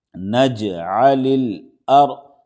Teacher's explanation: رائے ساکن سے پہلے زبر ہے، اس لیے را کو موٹا پڑھیں گے